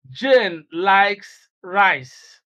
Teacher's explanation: we impose stress on likes and that is to contrast the idea that J likes rice with the idea that she doesn't hate it · Now, we impose stress on likes, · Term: contrastive stress